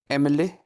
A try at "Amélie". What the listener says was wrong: না, এ কে তো এ বলি না, আমরা কি বলি? আ বলি, তাই না? আমেলি, ঠিক আছে?